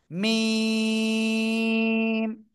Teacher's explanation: দুই ঠোঁটের বাইরের অংশ শুকনো জায়গা থেকে চার আলিফ টেনে উচ্চারণ করতে হবে মিম সবাই একসাথে জোরে বলেন এই মিম অক্ষরটা চার এলিফ টেনে